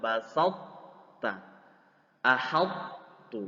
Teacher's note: Jadi bukan dibaca basatta atau dibaca langsung tak basatta, tapi masih ada sifat tebal dari to